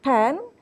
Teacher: Or when I say A, such as in the word pen, so we understand that A, our tongue position is mid. Yeah, and the tongue is lax, not tense anymore